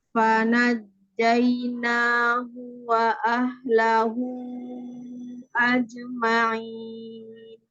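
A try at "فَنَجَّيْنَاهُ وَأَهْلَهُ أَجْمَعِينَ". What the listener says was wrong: Nah, jimnya yang sukun coba. Qalqalah jimnya ulangi sekali lagi.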